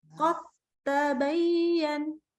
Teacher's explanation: Tapi ini ketemu ta, satu makhraj. Maka dia nggak ada dalnya, langsung lebur ke ta. Jadi bahkan bukan dibaca qad ta, bukan qad ta, tapi langsung qad tabayyan, langsung ke ta. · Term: idgham mutajanisain